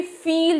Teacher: तो आप देखो, आप जब भी फील जैसे बोलते हो, फ साउंड आप प्रोड्यूस कर रहे हो, तो लोअर लिप हमारे अपर टीथ के एकदम नज़दीक आ जाता है और एयर बहुत मुश्किल से बाहर निकलता है। So there is a lot of friction.